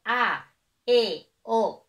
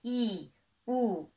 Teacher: cuando yo pronuncio A, E, O, yo digo A, E, O. Mis labios están separados, mientras que si hago la I y la U, la boca queda más cerrada. Es I, U. En ese momento los labios están más juntos. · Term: vocales abiertas